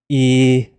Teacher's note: You can hear the sound coming from the front of your mouth and see your mouth making a nice big smile.